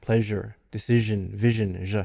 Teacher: for these your tongue is curled up and it's pointing kind of toward the palatal area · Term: palatal sounds